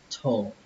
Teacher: Thổ nó giống như trong chữ xe thổ. Thổ. Chỉ khác là chúng ta sẽ đẩy hơi nó nhiều hơn.